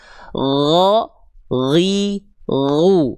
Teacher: Huruf gin mengalir suara saja tanpa mengalir nafas. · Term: huruf ghain